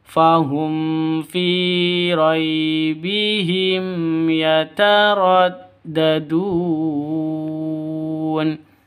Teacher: Panjang boleh dua boleh empat boleh enam harakat atau enam ketukan karena Mad Arid lukun · mim mati bertemu dengan Ya jelas terang ya karena izhar S syafawi